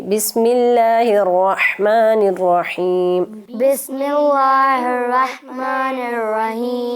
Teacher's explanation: لفظ اللہ کو جو ہے وہ موٹا پڑھ رہی ہیں، زیر کے ساتھ باریک پڑھیں گے